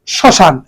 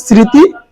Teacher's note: ম ফলার উচ্চারণ হবে না যে বর্ণটা সেই বর্ণটা উচ্চারিত হবে তবে একটু সানুনাসিক হবে